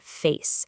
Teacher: Take the narrow closing glide of the A sound, like in the word face. You can feel the mouth starting slightly open and then smoothly closing just a bit, gliding towards a much tighter position.